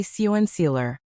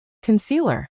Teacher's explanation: We shrink that first syllable into a quick relaxed a sound. It sounds like cu n. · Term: lazy English sound